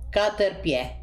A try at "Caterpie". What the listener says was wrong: Senza la E.